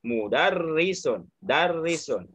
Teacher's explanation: Nah, ada tasdidnya, ditekan di ro. · Asli bertasdid ini hurufnya double ya, hurufnya double. Ya, jadi ada tasdid tandanya dua kali sebut.